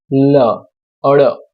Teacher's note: જીભની બંને બાજુથી હવા પસાર થાય તેવા વ્યંજનને પાર્શ્વિક વ્યંજન કહે છે · આપણે જીભ જ્યારે ઊંધા નળિયા જેવો આકાર જીભનો થાય, લ, અડ, આપણે તમે બોલો ત્યારે તમને ખબર પડી જશે કે પાર્શ્વિક વ્યંજન કોને કહેવાય. જીભની બંને બાજુથી હવા પસાર થાય તેવા વ્યંજન એટલે લ ને અડ.